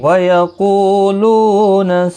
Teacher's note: قو واو مدہ ہے، لو بھی واو مدہ ہے، دونوں کو ایک ایک الف کی مقدار کے برابر کھینچ کر پڑھیں گے